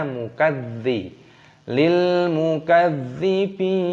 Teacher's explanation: lamnya berharokat sukun maka dibaca lil, dimatikan. Dzalnya juga berharokat tasdid maka ditekan, dimasukkan, diidghamkan